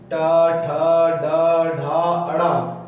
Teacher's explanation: ठ ड ढ अड़ ये आते हैं ट वर्ग में तो जो ट वर्ग में आते हैं वो मूर्धन्य से बोले जाते हैं